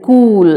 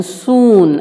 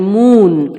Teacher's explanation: The lips are fully rounded, so it is known as back close rounded vowel. Long U is a back close rounded vowel. · the back part of the tongue is raised to the closed position, towards the closed position. The lips are fully rounded, so it is known as back close rounded vowel.